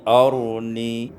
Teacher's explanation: iskanur ra ma'at tafkhim, disukunkan ra dengan membaca tafkhim tebal